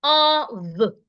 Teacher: o f is pronounced of the F there sounds like a v